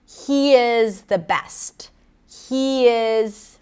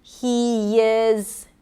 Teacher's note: If I connect those two vowels, he is, you hear a small y sound there. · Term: intrusive sounds